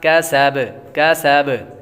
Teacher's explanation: سین حروف صفیرہ میں سے سیٹی کی آواز آئے گی، اور با جب وقف کریں گے تو ساکن ہوگی، اور جب حروف قلقلہ ساکن ہوں تو ان میں قلقلہ خوب ظاہر ہوگا۔